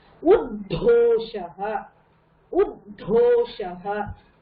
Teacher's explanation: இங்க உத்தோஷஹ வந்து த sound plus த ரெண்டுமே கேட்கணும்.